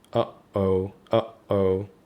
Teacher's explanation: you notice that there's a little pause between a and o · you can notice your vocal cords closing suddenly in your throat. So uhoh uhoh and that's a glottal stop.